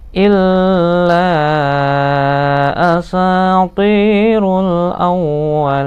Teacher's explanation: Sa panjang 2 harokat, ti panjang 2 harokat juga, kasroh bertemu dengan ya sukun. · Asatirul awwalin, wa-nya ditahan, ditekan maksudnya karena tasdid. Lin, kasroh bertemu dengan ya panjang, nun di belakangnya, berarti dia mat arid li sukun, nunnya harus dimatikan